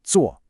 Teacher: that sharp, falling fourth tone again.